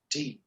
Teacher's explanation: The teeth ridge, upper teeth ridge, tip of the tongue, and forcible release of air.